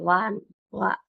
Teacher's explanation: దంతము మరియు ఓష్టము రెండింటి కలయకతో పలికే ఏకైక అక్షరం వా ను ఏమంటారు దంత్యోష్ట్యము అంటారు